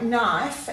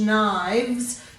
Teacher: you can hear that the f has changed to a v